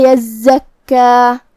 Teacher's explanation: آخر میں ہم کلمت یزکا پہ رکتے ہیں تو اس پہ 2 مد کے برابر اپنی آواز لمبی کرتے ہوئے یہ کلمہ پہ رکیں گے